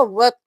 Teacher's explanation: یہاں پر ہم اس الف اور اسلام کو نہیں پڑھیں گے، ہم واو کو طا کے ساتھ ملائیں گے اور طا موٹا پڑھیں گے